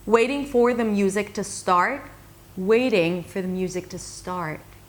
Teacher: So here, I reduce the for the, and I stress the waiting and start. Music is a content word, but I also said it softer and lower in pitch. I invested a lot less energy in the word music than the word start, because start is the important word, right?